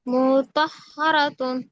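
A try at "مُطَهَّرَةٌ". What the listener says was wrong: মু টান হয়ে যাচ্ছে আপু। মিমে টান হচ্ছে, টানটা হবে না। মুতাহহারাতুন।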